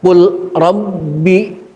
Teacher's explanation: Pertama saya baca qul rabbi, lamnya dijelaskan qul rabbi karena memang ada lam mati.